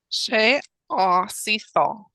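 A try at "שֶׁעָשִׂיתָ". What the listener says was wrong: Beautiful.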